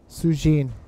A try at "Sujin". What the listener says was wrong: Sujin. No, it just sounded a little bit like sushi. She comes from Chinese ancestors. That's why.